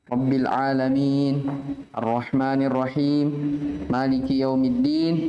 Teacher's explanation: Alamina asalnya berharokat nunnya, tapi ketika waqaf disukun. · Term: arid lisukun